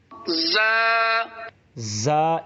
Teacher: زا اس میں سیٹی آپ کی نکلنی چاہیے